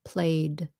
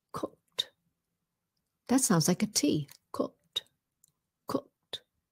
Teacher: so that one sounds like a D. Played. Cooked. That sounds like a T.